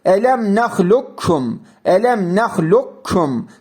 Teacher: Sanki burada kaf arada kayboluyor gibi. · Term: idgam-ı mütekaribeyn